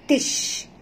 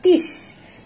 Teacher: bunyikan huruf shim ini tafashinya